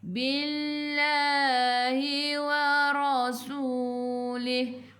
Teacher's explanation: Sebelum lafzul jalalah, kalau baris bawah kena baca nipis.